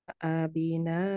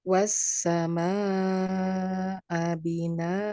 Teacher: kalau kita ingat hukumnya adalah mad iwad, dibaca panjang 2 harokat